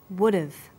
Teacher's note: when unstressed words begin with the letter H the H sound is often dropped in Connected speech